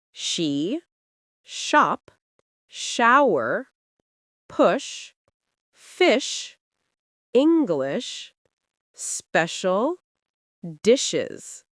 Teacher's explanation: This one is easier, but many learners mix up sh with s. Sh is softer and the lips push forward slightly, almost like you're about to whistle. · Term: Sh sound